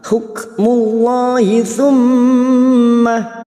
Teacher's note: Mim yang bertasdid gunnah musyaddadah kita dengungkan selama 3 harakat.